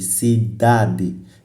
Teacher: da é a penúltima sílaba. Então, é a que também tem maior intensidade sonora. Logo, essa palavra chama-se palavra grave.